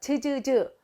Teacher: 우리 디귿과 시읒보다는 좀 뒤로 밀린다는 느낌이 있지. 그래서 혓바닥과 딱딱한 입천장이 닿으면서 소리가 만들어져. 즈즈즈 이렇게.